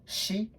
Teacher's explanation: this combination s and I, it changes into this shi sound